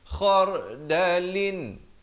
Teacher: Min idhar halqi, jangan panjang, terus masuk kha di hujung kerom-kerom, bertemu ra, dibacakan ra ini dengan tebal